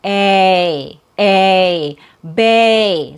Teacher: The first syllable has a real vowel sound. That's your stressed syllable. It has a long a sound.